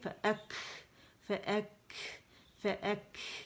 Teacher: قلقلہ نہیں کریں گے، ہمس کریں گے